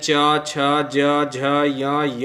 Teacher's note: इनकी जो आवाज़ निकलती है, ध्वनि निकलती है, वो तालु से निकलती है।